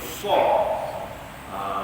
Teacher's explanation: Huruf sad ni ujung lidah sentuh antara gusi dan gigi bawah.